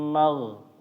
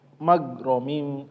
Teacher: Huruf ghain sama ya, ketika membaca amtas aluhum ajran fahum mim mag dialirkan. Jangan kayak G bahasa Indonesia magromim ya. Dialirkan suaranya mag.